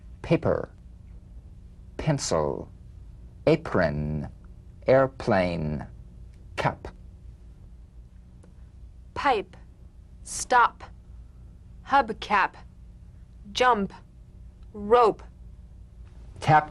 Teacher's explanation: the unvoiced labial stop consonant